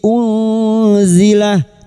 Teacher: nun sukun bertemu zain ikhfa hakiki, samarkan bunyi nun sukun dan mendengung selama 3 harokat